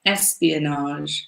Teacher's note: We put the accent on the first syllable